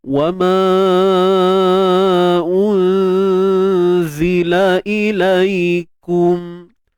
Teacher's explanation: Dengung nipis je tuan-puan dengung nipis. Sebab huruf zai tu nipis, jadi dengung pun sama nipis. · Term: ikhfa haqiqi